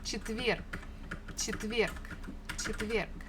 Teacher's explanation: the last letter is G, but we can easily pronounce it as K, just to make it a little bit easier for us for articulation.